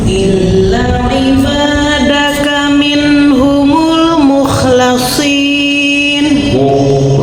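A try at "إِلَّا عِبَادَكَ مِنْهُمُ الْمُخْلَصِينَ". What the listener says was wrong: Jangan ditarik ya, dia harus tebal.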